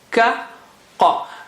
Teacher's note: Ka is flat, normal letter, ka, whereas qa is high sounding and kha also is high sounding.